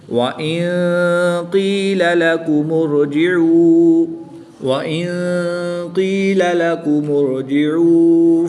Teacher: نون ساکن کے بعد قاف حروف اخفا میں سے ہے تو یہاں پر بھی اخفا ہوگا یعنی غنہ زمانی کر کے پڑھیں گے